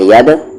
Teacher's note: دال پہ جزم ہے، قلقلہ ہوگا، آواز باؤنس ہوگی